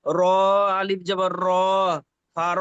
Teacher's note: আলিফ মাদ্দাকে এক আলিফ পরিমাণ টান দিয়ে পড়তে হবে